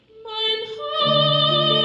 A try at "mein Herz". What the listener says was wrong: Not quite. Your tongue, you don't feel any teeth. Just say the word heads. Yeah, so you're still in touch with these molars in the back.